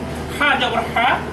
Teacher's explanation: এটি হলকের মাঝখান থেকে উচ্চারিত হয়